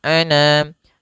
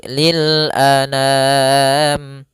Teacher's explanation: A sempurnakan hamzah, jangan anam. Jangan dibaca dengan dengung atau dibaca dengan masuk hidung, tidak, tapi lil anam.